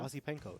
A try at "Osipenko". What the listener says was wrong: Well, it's more of like a soft S, but that's actually okay.